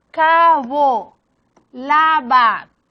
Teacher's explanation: Bilabiales porque hacen uso de los dos labios y sonoras porque movimentan las cuerdas vocales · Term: fricativas, bilabiales sonoras